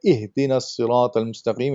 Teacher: the ha, when you say ihdina sirat al-mustaqim, it needs to come from the bottom part of your throat